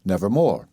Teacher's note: emphasis admitting no doubt and these considerations inevitably led me to the long o as the most sonorous vowel in connection with r as the most producible consonant